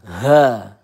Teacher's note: ya ini ha makhrajnya pangkal tenggorokan